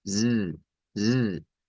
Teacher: Pero debemos recordar que esta Z que está aquí no es la beta que nosotros conocemos con esta posición interdental. De la beta, así, beta, como lo pronunciarían los españoles, no es el mismo que se encuentra acá. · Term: S vibrante